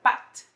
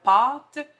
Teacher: le « a » de pâte, qui est plus long, qui est plus à l'arrière de la bouche